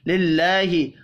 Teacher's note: اللہ کا نام زیر کی وجہ سے باریک پڑھا جائے گا